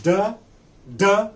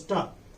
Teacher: One is d, another one is ta. Da is voiced, whereas ta is voiceless. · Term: alveolar plosive